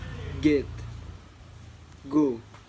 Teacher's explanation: Next one is voiced velar stop